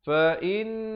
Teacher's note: Perkataan Allah kalau datang sebelumnya baris fathah ataupun dhammah dibaca tebal. Fa innallah dengan kadar panjang 2 harakat.